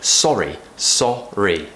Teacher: we want the AH to make us sound nice and British